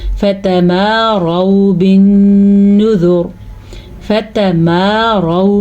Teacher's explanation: रॉ पुर पढ़ेंगे क्योंकि रॉ पे ज़बर है